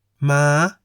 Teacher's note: Next is the high tone. In the high tone, the pitch of your voice ascends from the middle. For example, ma, meaning horse.